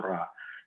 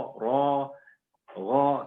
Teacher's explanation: Jadi nanti untuk next setiap huruf-huruf so, huruf-huruf po, huruf-huruf to, ro, nggak boleh lagi kalau setiap fatah nggak boleh bacanya a, harus bacanya o. Gitu.